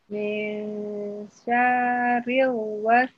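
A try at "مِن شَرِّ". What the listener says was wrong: Sya-nya nggak panjang, bukan syarril, tapi syarril.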